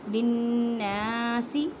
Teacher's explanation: من بعد ما بیناہ للناس فی الکتاب اولئک یلعنہم اللہ، بیناہ، نون مشدد گنہ کریں۔ للناس، نون کو گنہ ہوگا اور ایک الف کی مقدار میں کھینچ کر پڑھیں